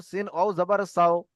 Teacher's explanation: ওয়াও সাকিনের ডান দিকে জাবার আছে, এটি হলো ওয়াও লিন। একে নরম আওয়াজে তাড়াতাড়ি পড়তে হবে।